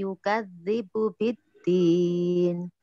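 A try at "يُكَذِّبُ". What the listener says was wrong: Benar, yukadzibu.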